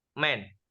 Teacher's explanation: This sound is produced by closing the lips and allowing air to flow through the nasal passage.